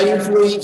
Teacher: en la palabra influir son dos vocales cerradas diferentes, eso es diptongo